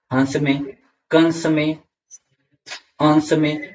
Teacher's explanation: अनुस्वार जो होता है इसका उच्चारण स्थान नाक से होता है।